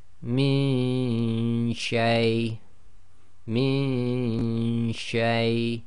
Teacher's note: you don't get a clear Noon sound because your tongue is not going to the articulation point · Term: Ghunna